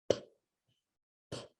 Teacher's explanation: Kind of makes that popping sound right in the front of your mouth.